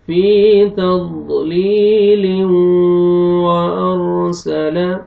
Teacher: واو فتحہ وا، یہ دیکھیں واو شدہ اس لیے کہ اگر آپ اس پچھلی آیت کو اس نیکسٹ آیت کے ساتھ ملاتے ہیں تو تنوین کے بعد دیکھیں حروف ارملون میں سے واو ہے، یہاں پہ ادغام غنہ کے ساتھ کریں گے